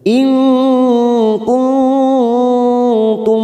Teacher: nun sukun bertemu kaf dan nun sukun bertemu tak, masing-masing kita samarkan 3 ketuk, namanya bacaan ikhfa hakiki. Kita samarkan selama 3 ketuk.